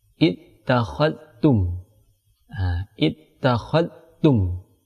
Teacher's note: Langsung diidghamkan kepada huruf ta.